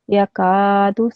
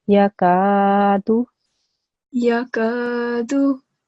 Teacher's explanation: So can you hear how the kaf sound is a bit long? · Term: alif madda